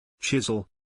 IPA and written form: ˈtʃɪz.əl (Chisel)